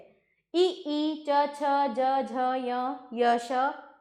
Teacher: इसका उच्चारण स्थान तालु है तो वर्ग का नाम है तालव्य